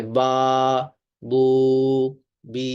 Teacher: یہ منہ کے اندر کا جو خلا ہے، خالی حصہ ہے، وہاں سے ان کی آوازیں ادا ہوتی ہیں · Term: حروف مدہ